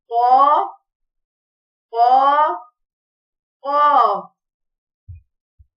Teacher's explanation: زبان کا آخری حصہ اوپر کوے کے ساتھ تالو کے نرم والے حصے سے لگے تو قاف ادا ہوتا ہے، قاف موٹا پڑھا جائے گا